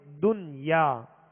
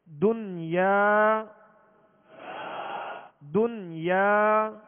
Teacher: تو نون ساکن کے بعد اسی کلمے میں یا ہے حروف یرملون میں سے، لہذا یہاں ادغام نہیں بلکہ اظہار کریں گے، اور یہ اظہار مطلق کہلاتا ہے۔ نہ یہاں غنہ ہوگا اور نہ ہی ادغام ہوگا، بلکہ اس کو پڑھیں گے دنیا۔